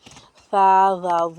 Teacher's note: حروف لثویہ زبان کی نوک اور سامنے کے یعنی ثنایا اولیہ کے دانتوں کے کنارے سے ادا ہوتے ہیں۔